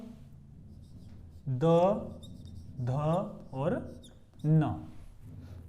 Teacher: तीसरा, चौथा और पांचवा वो कहां आ जाएगा, घोष। यानी इनका उच्चारण करते हुए घोष होगा, स्वर यंत्रियों में कंपन होता है इनका उच्चारण करते हुए।